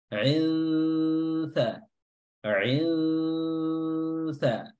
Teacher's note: Cara menyamarkan tanwin dengan cara adalah meletakkan lidah kita pada makhraj huruf sa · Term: ikhfa haqiqi